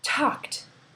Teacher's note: K is a voiceless sound, so the ending becomes T, talked. Look at bake.